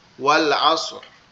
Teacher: তো এই যে আমরা যদি এখানে ওয়াক্কাফ করি, অর্থাৎ আমরা যদি এখানে থামি, ওয়াল আসর, ঠিক আছে, তখন রটা মোটা করতে হবে